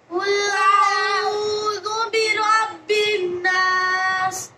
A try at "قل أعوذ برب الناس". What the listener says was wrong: বিন গুণ করলে হবে, আবার